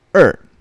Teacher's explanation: number 2, if you notice, it is in fourth tone. Okay, so number 2 is read as Er.